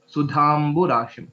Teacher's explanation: There's no Mahaprana in the last letter.